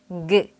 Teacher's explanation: 혀의 뒷부분을 영구개에 댔다가 떼며 ng 하고 소리내면 돼요.